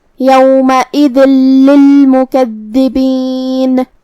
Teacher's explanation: لام حروف الادغام بغیر غنہ میں سے ہے، تو ہم یہ تنوین کو لام میں ملا کے بغیر غنہ سے لیکن تشدید کے ساتھ یہ حکم کو ادا کریں گے